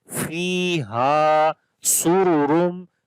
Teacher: This Ra we read in heavy sound